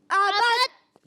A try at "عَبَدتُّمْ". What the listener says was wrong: دال کی آواز نہیں آئے گی. عبت. تا میم پیش تم, عبت تم.